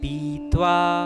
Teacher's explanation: प में जो ई की मात्रा है वह लघु नहीं दीर्घ है